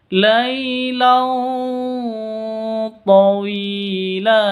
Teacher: tanwin bertemu dengan tho cara bacanya samar didengungkan siap-siap ke huruf tho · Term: ikhfa Hakiki